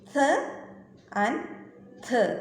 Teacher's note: The tip of the tongue and the back part of the upper front teeth are the articulators ഫോർ dental sounds. The tip of the tongue is the active ആർട്ടിക്കുലേറ്റർ and it moves towards the back part of the upper front teeth, the passive articulator. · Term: dental sounds